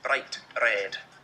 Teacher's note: it's much more common to roll the r just for one roll it's called a tapped r